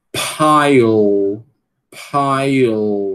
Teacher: Tem um schwazinho aqui entre o E e o L.